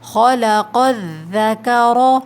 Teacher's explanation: خلق الذکر، کاف کا میں نے آپ کو بیچ میں اس لیے بتایا کہ باریک پڑھیں گے، کہ اکثر ایسا ہوتا ہے کہ 2 حرف جہاں موٹے پڑھے جائیں تو بیچ کا حرف ہم سے موٹا ہو جاتا ہے، تو ہمیں کاف کو موٹا نہیں کرنا، قوف اور را پہ زبر ہے اس وجہ سے موٹا پڑھا جائے گا